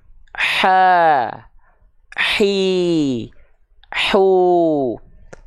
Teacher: Dialirkan dulu berbisiknya, baru keluarkan vokal a, i, u-nya. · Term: H kecil